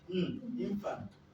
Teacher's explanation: Infant will take its primary stress on the first syllable. The second syllable is unstressed. By virtue of being unstressed, the vowel there becomes a weak vowel, a short sound.